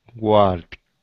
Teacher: Don't say the L, no L sound, just walked.